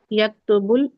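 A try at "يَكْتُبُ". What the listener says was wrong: यक्तुबु, हाँ यक्तुबु, यक्ताबु नहीं यक्तुबु, ठीक है ना?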